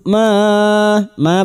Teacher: bertemunya mad dengan hamzah di lain kalimat mad jaiz lima harakat kita panjangkan